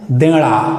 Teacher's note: देना शब्द है देणा। यानी न के स्थान पे ण का प्रयोग करते हैं।